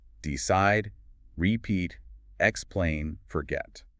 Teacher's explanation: >> And many two-cllable verbs stress the second syllable